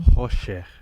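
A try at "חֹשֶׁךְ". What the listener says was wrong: Hoshech. Yes, okay,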